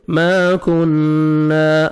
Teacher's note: الف مدہ, میم کو 1 سیکنڈ کھینچنا ہے.